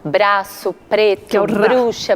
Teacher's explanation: é o R que tem uma vibração da ponta da língua